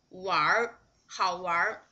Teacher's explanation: You need to pronounce this 玩 and 儿 together just like a whole syllable. 玩 好 玩 Okay, the same thing to the 哪 儿 事 儿 名 这 儿 You just pronounce these two words together just like a whole syllable. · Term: 儿 化